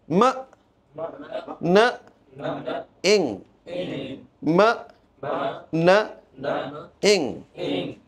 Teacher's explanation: নেইজাল sound. মানে নাক দিয়ে একটা কম্পনের সৃষ্টি হয়, বাতাসটা নাক দিয়ে বের হয়।